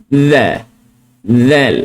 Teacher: So, hujung lidah ni kita nak keluarkan sikit di antara gigi atas dengan gigi bawah. Keluarkan. Lepaskan suara.